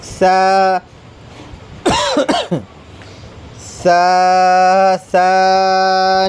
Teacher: زبان کی نوک اوپر کے دو دانتوں کے کنارے سے ٹکرائے گی جب ہم سا بولیں گے